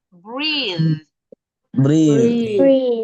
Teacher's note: Jadi agak ditahan sedikit th-nya supaya ada bunyinya.